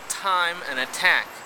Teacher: This is a very strong sound. It's an aspirated sound, but it's the same T phoneme.